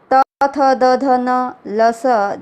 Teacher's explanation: त थ द ध न ल स, जब हम इनका उच्चारण करते हैं तो हमारी जीवा दंत को छूती है, स्पर्श करती है, और इसलिए दंतव्य वर्ण कहलाते हैं।